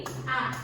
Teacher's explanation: ketika pengucapan A, lidahnya hanya ditahan di tengah menjadi A.